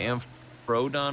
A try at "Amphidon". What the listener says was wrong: It is no, there's no R. It's amphidon, but it's probably pronounced more like P with an aspirant. Amphidon. P with a little breathing noise.